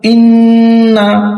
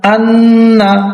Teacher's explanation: নাকের বাহি হইতে গুন্না উচ্চারিত হয়